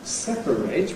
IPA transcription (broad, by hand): ˈsepəreɪt